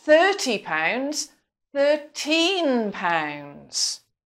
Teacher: if a speaker knows that it's important not to confuse the two numbers, then they will stress the teen part because that's the syllable that gives the most important information in that case.